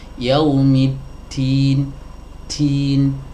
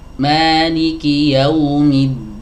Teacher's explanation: Yaumiddin, tidak boleh ada nafas yang terdorong atau tersembur keluar, karena itu adalah sifat hams ya. Padahal huruf dal ini memiliki sifat jahar, artinya aliran udaranya itu tidak boleh mengalir